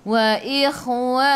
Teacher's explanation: Kha khiyakhu biar menggelegak, biar ada angin.